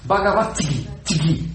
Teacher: O T é surdo. E o G é sonoro.